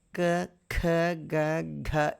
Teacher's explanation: ఇవన్నీ గొంతు స్థానం నుంచి వస్తున్నాయి